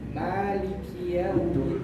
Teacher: Huruf lam maliki, bukan maliki kayak hampir mau huruf ra